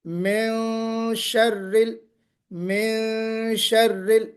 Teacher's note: آواز ناک سے نکالی مگر آواز کو چھپاتے ہوئے نکالا. اخفا کہتے ہیں.